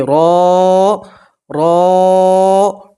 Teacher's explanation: را کو موٹا پڑھیں گے اور را کے ساتھ الف مدہ ہے تو آپ ایک الف کے برابر کھینچ کر پڑھیں گے